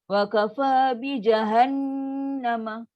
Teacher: Kalau macam ni, wa kafa bi jahannama, paling sempurna sebab dengung dia panjang.